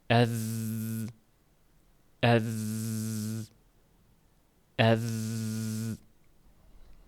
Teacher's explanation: sezgan bo'lsangiz aniq qulog'ingizda tebranish bor. Bir zing'illagan tovush kelib turadi. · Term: jahr harflari